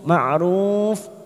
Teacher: ma'ruf mat arid disukun 4 ketuk atau 4 harokat kita panjangkan